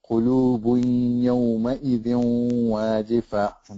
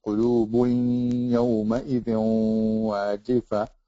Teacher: This means that the noon is not pronounced clearly. Instead, it is inserted or merged into the next letter with the ghunna or nasalization that is part of the noon remaining. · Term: idgham bi ghunna